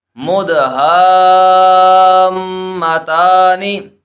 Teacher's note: حروف مدہ کے بعد سکون اصلی ہونے کی وجہ سے یہاں پر بھی مد لازم ہی ہے اور میم مشدد ہے تو یہاں پر غنہ ہم کریں گے